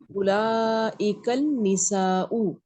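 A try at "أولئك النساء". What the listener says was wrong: हाँ अल नहीं लगाए, वो नून से मिला दें क्योंकि नून हुरूफ शम्सी है ना। उलाइकन निसाउ,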